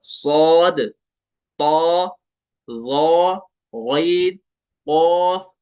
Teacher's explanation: जुबान की जड़ थोड़ी सी उठती है ऊपर पीछे से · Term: पुर पढ़ने का तरीका